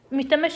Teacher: Ümidləmək sözündə ümumiyyətlə hamısı incədir.